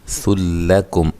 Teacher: نون تنوین کا یہاں ادغام بلا غنہ ہے، غنہ بلا غنہ یعنی کہ غنہ کے بغیر ادغام کریں گے۔